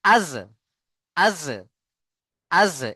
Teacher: হামজা জবার আজ আজ আজ। এই আজ বলতে গিয়ে দেখেন আপনার জীবের আগা এবং দাঁতের আগার সাথে লাগছে কিনা।